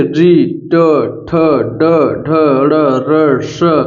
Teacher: ये सब कहां से बोले जा रहे हैं मुर्धा से अत सबको जीभ पलट करके बोला जा रहा है